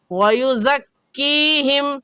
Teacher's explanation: یہ قاعدہ ہم نورانی قاعدے کی تختی نمبر 8 میں پڑھ چکے ہیں کہ یا ساکن سے پہلے زیر آ جائے، یا ساکن سے پہلے زیر آ جائے تو یائے مدہ کہلاتا ہے، اور یائے مدہ کو ایک الف کی مقدار کھینچ کر پڑھتے ہیں